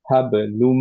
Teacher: জি দম্মাতাইন, হাবলুন ছিল, তারপরে যেহেতু একটা মিম ছিল, এইটার সাথে মার্জ হয়ে গেল, তার মানে এখন আমরা পড়বো হচ্ছে হাবলুম। আমাদের লুন পড়তে হবে না, নুন কমপ্লিটলি চলে গেল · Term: কমপ্লিট মার্জ